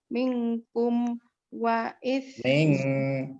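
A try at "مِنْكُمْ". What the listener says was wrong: Mingkum dengungnya kurang lama Ibu.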